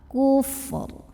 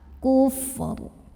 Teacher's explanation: Fa-nya dialirkan, kemudian ro-nya tetap kita baca dengan tebal. Kufur. Dan ini adalah jawaban untuk pertanyaan hari kemarin. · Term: tafkhim